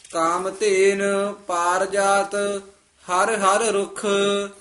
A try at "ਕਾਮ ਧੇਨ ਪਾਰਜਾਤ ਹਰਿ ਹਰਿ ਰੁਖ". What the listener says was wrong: ਰੁੱਖ ਕਸ ਕੇ ਬੋਲਣਾ, ਕਾਮ ਤੀਨ ਪਾਰ ਜਾਤ ਹਰ ਹਰ ਰੁੱਖ।